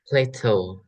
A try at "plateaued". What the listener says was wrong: Plateau with the D at the end plateaued